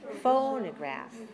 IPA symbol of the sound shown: ə